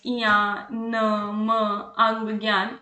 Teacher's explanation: नासिक्य व्यंजन जो आपकी नाक की सहायता से बोले जाते हैं। बोलते समय नाक वायु समय वायु नाक से बाहर निकलती है।